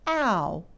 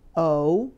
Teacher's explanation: plow is pronounced as the diphthong ow, a two-part sound that doesn't sound anything like that long O